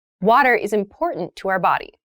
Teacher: Yes, the pronunciation of this word, that first T, is actually reduced. It sounds more like a D in fast speech.